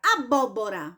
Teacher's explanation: a palavra abóbora tem 4 sílabas ela é polissílaba certo e ela também é proparoxítona por quê Porque a sílaba tônica nela é a antepenúltima